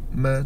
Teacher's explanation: mati bila kata mim mati belakangnya pasti syafawi syafatan tempusian nah mim makhraj dia syafatan ma dua bibir bertangkuk ma tu syafawi dia bibir cumanya atau pasal kalau tak dengar